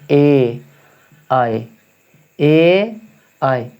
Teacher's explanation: कंठ और तालु दोनों से बोला जाता है